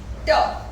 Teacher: ट आपका पटक अनवॉइस्ड है। Place of articulation alveolar, manner of articulation plosive या stop